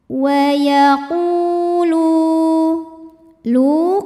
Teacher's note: ada wau sukun yang sebelumnya berbaris damah cara bacanya lam kita panjangkan dua harakat saja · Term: Mad Thobi'i